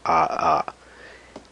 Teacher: the sound of the a is just extended so it takes two beats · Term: long vowel